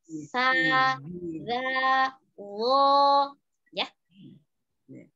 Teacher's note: Yang harus sa, za, dan lo keluar lidahnya.